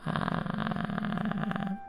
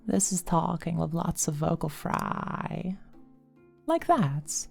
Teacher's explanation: of having a nice pure tone it's more of ah and there's crackling and popping and all that sort of stuff going on